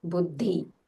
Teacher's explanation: The Mahapranas, wherever you see, like, for example, Buddhi, use a little more aspiration